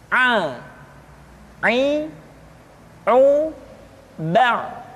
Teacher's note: huruf A dikeluarkan dari tengah-tengah tenggorokan seperti kita mengucapkan huruf H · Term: huruf Ain